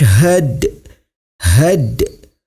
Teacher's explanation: hukum bacaannya adalah Qolqolah Sugro cara membacanya huruf Dal nya sedikit dipantulkan